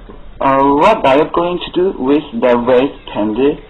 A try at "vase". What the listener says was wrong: Candy， ▁你 读 ▁vase， ▁把 这 个 ▁vase ▁拉 长 一 点 ， 它 是 个